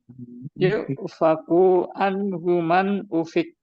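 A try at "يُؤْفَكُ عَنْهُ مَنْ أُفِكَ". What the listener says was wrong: Disambung, kafnya disambung ke ainnya langsung. Yuk faku an. Jadi jangan yuk faku itu matobi. Itu kan nggak ada matobi.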